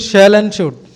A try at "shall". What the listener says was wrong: सेल नहीं होता बेटा, शैल एंड शुड। जैसे अगर आप उर्दू को जानने वाले हैं, आप इसको ऐसे समझिए, बड़ा शीन की तरह पढ़ा जाता है। जो एस और एच होता है इंग्लिश में, ये बड़े शीन की तरह पढ़ा जाते हैं।